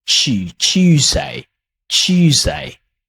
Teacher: British English often, they add soft Y after the letter T.